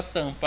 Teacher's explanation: Porque o M ele só nasaliza a vogal. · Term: vogais nasais